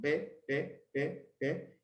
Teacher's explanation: La pi era sin aspiración